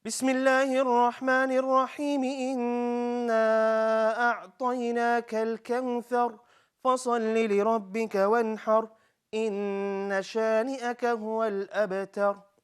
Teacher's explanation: You notice my ghunnas are long, my mad is also long enough.